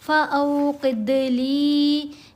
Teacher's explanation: पेश की आवाज़ नहीं, ऊपर ज़बर है, आगे वाव है, तो दरमियानी सी आवाज़ बन गई फ़ऊ क़िदली। दाल के ऊपर कलकला किया जाएगा, क़ाफ़ को मोटा पड़ा जाएगा।